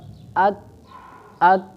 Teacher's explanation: څه شی دی اول په دې کې صفت شدت دی نو تاسو کاف مخرج باندې تاسو څه شی وکئ غور وکئ هلته آواز بندیږي او سا هم